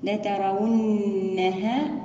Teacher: نأتي بغنة النون المشددة